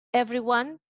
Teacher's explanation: you take a word like everyone, and you know that it's it gets the main stress on the syllable ev